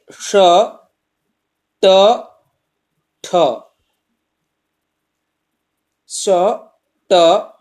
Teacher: ये तीनों मूर्धन्य वर्ण है, मूर्धा इसका उच्चारण स्थान है, तो विसर्ग के स्थान पर श आदेश मूर्धन्य स हो जाता है।